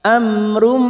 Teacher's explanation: Wa idza ja'ahum, mim sukun bertemu hamzah idhar safawi, mim sukun dibaca jelas tanpa mendengung. · mim sukun lagi di sini bertemu ro, idhar safawi sama kita baca jelas